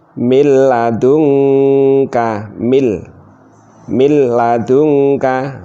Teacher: nun sukun bertemu lam enggak usah mendengung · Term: idghom Bilaghunnah